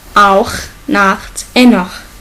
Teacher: CH, qu'on l'appelle guttural parce qu'il se prononce dans la gorge. Ça sonne comme R en français.